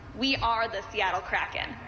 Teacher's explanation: a little bit of a vocal fry. It's just at the end.